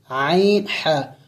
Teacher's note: عین ہا یہ حلق کے درمیانے وسط حلق یعنی درمیانی حلق سے ادا ہوتے ہیں